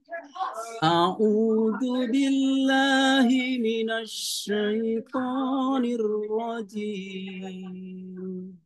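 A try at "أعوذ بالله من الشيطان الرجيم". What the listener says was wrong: Agak turun sedikit. Nirrajim. Agak turun.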